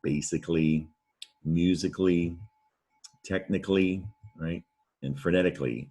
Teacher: right and frenetically and the thing about that suffix is you when you pronounce it it's almost like you only hear the ly